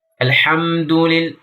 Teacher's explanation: ini terdengar tidak jelas atau bahkan hilang sama sekali pengucapan A-nya. Maka ini termasuk kesalahan yang sangat fatal.